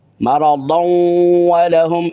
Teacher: اس کو اس طرح آگے ملائیں گے مرضان کو، تو آگے واو کے اوپر تشدید آ جائے گی اور ادغام ہو جائے گا